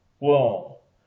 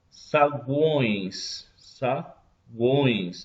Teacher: Observem que parte do som sai pela boca e parte sai pelo nariz. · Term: tritongos nasais